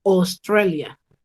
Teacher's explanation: En español el diptongo es AU, en inglés el diptongo es O